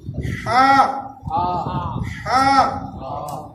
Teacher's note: یہ جو ہا ہے حلوے والی، اس کو ہم حلق سے نکالیں گے، ہا ہا۔ بسم اللہ الرحمن الرحیم، بسم اللہ الرحمن الرحیم۔